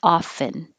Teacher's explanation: you can say the t but it's not as common so most people don't have the t and it sounds like often and the vowel is ah so